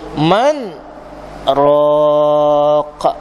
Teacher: Saktah ni makna kita berhenti, tahan nafas lebih kurang 2 harakat, kemudian baru sambung balik bacaan dia.